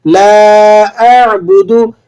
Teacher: با پیش بو، دال پیش دو، دونوں نہیں کھینچے جائیں گے، دونوں کے کھینچنے میں احتیاط کرنی ہے آپ نے، بالکل بھی انہیں کھینچ کر ادا نہیں کرنا۔